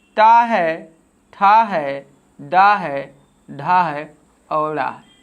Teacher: जो टा वर्ग है इसका उच्चारण स्थान मूर्धा होता है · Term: मूर्धन्य